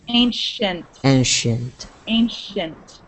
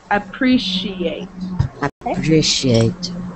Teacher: So you guys all know that C-I sound. That C-I sound in the middle of those words, it sounds like a sh.